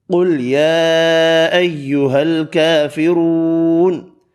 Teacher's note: اس آیت میں قاف اور را پر پڑے، چھوٹی مد 3 الف کی مقدار میں کھینچ کر پڑی، کھڑی زبر 1 الف کی مقدار میں کھینچ کر پڑی، واو مدہ بھی 1 الف کی مقدار میں کھینچ کر پڑا